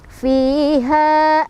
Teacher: Warruhu fi mad tabi'i lagi, kasrah bertemu ya sukun, bacanya panjang 2 harokat. Fiha, ha mad tabi'i lagi, dibaca panjang 2 harokat ya, karena fathah bertemu dengan alif